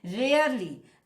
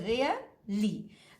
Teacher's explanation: तो रेयर ये stressed syllable, इसको हमको ज्यादा इंपॉर्टेंस देना, which carries more weightage, that is this is stressed syllable. ली which carries less weightage.